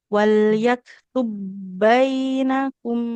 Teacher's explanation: Enggak usah walaktu bainakum langsung ke hurbnya. Jadi di sini tidak usah kita pantulkan huruf banya.